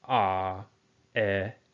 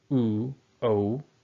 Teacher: The unrounded lip produces these vowels. Ah, I. Rounded produces these vowels. U, O.